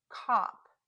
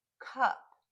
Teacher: back and the short u is in the middle middle also the jaw is lower for the short o and a little more raised for the short u